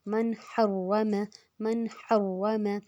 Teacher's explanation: ہم نے غنہ نہیں کرنا ہے کیونکہ آگے ہا آ گیا، ہا حروف حلقی ہے، زبان میں پیچھے کی طرف زور دینا ہے